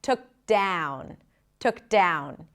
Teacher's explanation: Starts with the a as in cat. So even though it's spelled with an o, it's like a front a sound. Shifting to the oo and ending with an n. · Then we connect the k to the D, took down. The ow vowel is a diphthong, just like with the word out. Starts with the a as in cat.